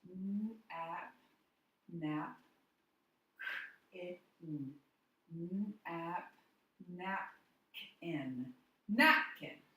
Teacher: the first syllable in this word is said louder, longer, higher. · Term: stressed syllable